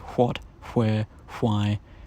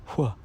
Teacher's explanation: It is the voiceless equivalent of the voiced approximant w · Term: voiceless approximant